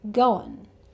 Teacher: The 'ing' sound changes to the 'uhn' sound again, so the schwa sound with the 'n' sound.